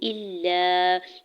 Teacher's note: اس کے اوپر مد منفصل ہے، 4 سے 5 حرکت کھینچ کے ادا کریں گے ، تتقو، حمزہ کی زبر کو نون ساکن کے ساتھ ملاتے